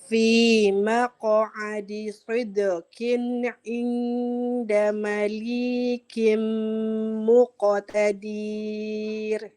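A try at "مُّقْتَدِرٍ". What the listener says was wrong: Ibu mohon maaf. Muqtadir itu pendek. Ya, jadi bacanya fi maq'adi sidqin 'inda malikim muqtadir. Huruf ainnya kurang.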